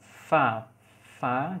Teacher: bibir bawah sebagai artikulator nya ketemu dengan gigi atas sebagai titik artikulasinya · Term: labiodental